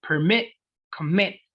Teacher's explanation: La mayor fuerza de voz va en la última sílaba.